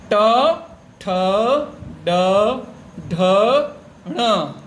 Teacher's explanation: जब आप ट बोलते हो तो आपकी जीभ मुड़ करके दांतों के पीछे वाले भाग में टच होती है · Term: मूर्धा